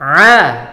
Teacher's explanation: Dan yang terakhir di bagian Al-Azim. Di sini pakai huruf ain yang keluar dari tengah tenggorokan